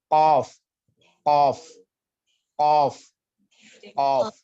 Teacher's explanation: Jadi dia tempatnya itu perbatasan antara rongga tenggorokan dengan dengan tenggorokan atas dengan rongga mulut ya. Jadi lidah bagian dalam ya, pangkal lidah itu menyentuh rahang atas, rahang kering dan rahang lunak ya. · makhrojnya atau tempat keluar hurufnya itu di Pangkal lidah lidah bagian dalam dan menyentuh langit-langit atau rahang rahang atas rahang lunak dan kering ya rahang keringnya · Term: huruf qaf, huruf off